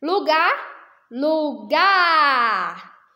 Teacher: é o gar, a sílaba que você pronuncia com mais intensidade. É como se eu estivesse gritando aqui para vocês, né? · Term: sílaba tônica